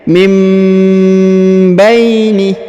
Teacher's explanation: huruf nun sukun bertemu ba maka Nun sukunnya menghilang melebur menjadi mim · nun sukunnya menghilang melebur menjadi mim ya, seperti ini diberikan tanda mim kecil, maka tidak dibaca min tapi mim ya. Mim baini ya, kemudian huruf ba diayun sekali karena di depannya terdapat ya sukun.